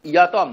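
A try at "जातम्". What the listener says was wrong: ইয়াতম না, জাতম, জাতম, জাতম, জয় বর্গেজ, বর্গেজ হ্যাঁ হ্যাঁ, জায়াতে।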